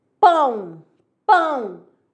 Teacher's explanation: O o é semivogal. Quando falar pão, esse o sai o som de u.